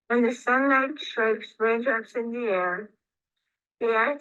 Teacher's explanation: you could hear her voice is a little bit breathy